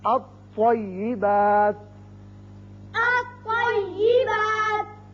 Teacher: اس کو الطیبات نہیں پڑھیں گے بلکہ لام غائب ہو جائے گا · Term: حروف شمسی